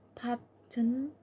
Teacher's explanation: The letter T is pronounced as a glottal stop. The sound in the middle of a word when it follow a vowel, N sounds or R sounds including all R controlled vowels, and is followed by an N sounds.